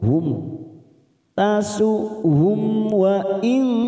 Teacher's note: mim sukun bertemu waw, kita baca jelas tanpa mendengung